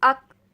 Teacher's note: فوراً سے رک جائیں گے کیونکہ اس کو آخر میں حرکت نہیں دینی، اس کو باریک اور نارمل پڑھنا ہے. عقل، اک، عقل، اک. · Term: کاف